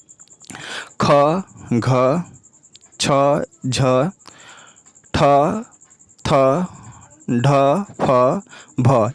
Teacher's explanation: इन व्यंजनों के उच्चारण करते समय श्वास बल अधिक मात्रा में रहता है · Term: महाप्राण व्यंजन